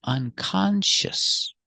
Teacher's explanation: Unconscious. 3 syllables. Unconscious. Put the stress on the second syllable. Con. Unconscious.